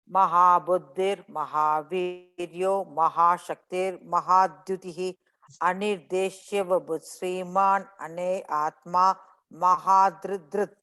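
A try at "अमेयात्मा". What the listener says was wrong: But in the second last word, you're saying ane atma. It's ame atma. Anirdeshya vapuh shriman ame atma mahadridrit.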